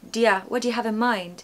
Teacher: you becomes di okay Dia what do you have in mind so that do you has become dear it's a completely different sound · So that do you has become dia. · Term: do you becomes dia